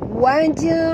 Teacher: huruf jim apabila dia mati di tengah-tengah kalimah, kita kena lantunkan dia dengan lantunan kecil ya, qalqalah surah ya. Waj'al tongkatkan lidah ke langit.